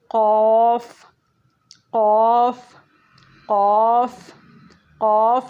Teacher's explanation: ये भी मोटा हुर्फ़ है, मुँह को खोल के मुँह के अंदर जगह बना के इसको अदा किया जाएगा। हलक़ के इब्तिदाई हिस्से के करीब जहाँ गोश्त का लोथड़ा कव्वा होता है वहाँ से अदा होता है, मोटा भारी अदा किया जाएगा। आप देखें जहाँ पे गोश्त का लोथड़ा सा लटका हुआ है, इस तरीके से इस जगह से अदा किया जाएगा।